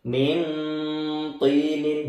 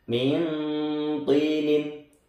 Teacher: nunnya dibaca tapi menuju ke to, jadi samar nunnya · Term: ikhfa haqiqi